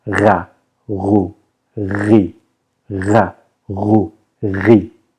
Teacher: I start my vocal cords. So it's a snore, but a voiced snore. And that's how you pronounce r.